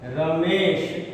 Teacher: इसी तरह से एक शब्द है रमा और इसमें ईश हम जोड़ दें तो रमा का आ और ईश का ई ये दोनों मिलकर के ए हो जाएंगे और शब्द बनेगा रमेश